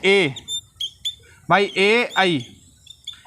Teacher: ए का उच्चारण स्थान क्या है? कंठ और तालु। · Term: कंठ तालव्यो